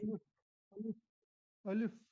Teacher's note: الف کا مخرج ہے منہ کے اندر کا خالی حصہ، الف، الف ایسے ادا کریں گے.